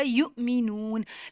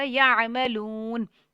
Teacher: جب حمزہ ساکن ہو اس کے علاوہ قرآن پاک میں کہیں جھٹکا نہیں دیا جاتا. یہاں پہ صرف جھٹکا دیا جائے گا یؤمنون، لیکن یہاں پہ کوئی جھٹکا نہیں آئے گا یعملون. لو کو لمبا کریں گے، حروف مدہ ہے، جزم والی واو سے پہلے پیش ہے، ایک الف تک لمبا ہوگا.